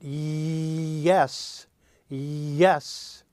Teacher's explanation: puts the middle of your tongue very close to your soft palate, leaving only a little room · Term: Y sound